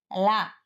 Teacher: ల నాదం దంతమూల్యం పార్శ్వకం